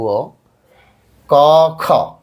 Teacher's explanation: ক এ বাতাস কম খ এ বেশি কিন্তু কাঁপে নাই